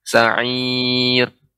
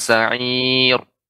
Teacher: sa'ir, tipis ra-nya dibaca dengan tipis. Sa'ir.